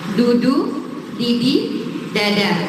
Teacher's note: Ujung lidahnya bertemu dengan langit-langit atas.